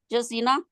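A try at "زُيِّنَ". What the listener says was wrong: जुज़ीना नहीं है, देखे पढ़े ज़य्यना जा को पूरे पढ़े, यू नहीं है जी, जा को ठीक करें। ज़य्या, ज़य्यना, ज़ुय्यिना, ज़ुय्यिना आगे है ना, ज़ुज़्ज़िना पढ़ते हैं ना, जा के साथ आगे या को भी आप जा पढ़ रहे हैं, ये मैं कह रही हूँ आपको कि इसको ठीक करें, अपने हर्फ के जनी के मखरज को ठीक करें, ये गलत है।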